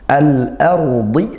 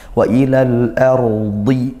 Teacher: ra sukun dibaca tafkhim tebal